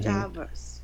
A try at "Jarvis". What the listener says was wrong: Yeah, like so that V sound is more like a It's like you have to maybe just bite your tongue. Sorry, not your tongue, but your lower lip a little bit. So Jarvis.